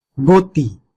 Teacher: গতি বানানের সময় ওকার ব্যবহার করা হয়নি কিন্তু উচ্চারণটা ওকারান্ত হয়েছে